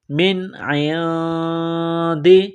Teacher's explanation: نون ساکن کے بعد عین ہے، حروف حلقی ہے تو نون ساکن پر غنہ نہیں کریں گے